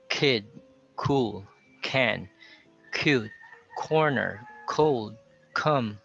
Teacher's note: so the k sound is also aspirated